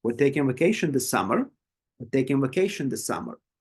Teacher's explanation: my voice would be normal on all of the first um part of the sentence and then I will just highlight the summer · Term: focus word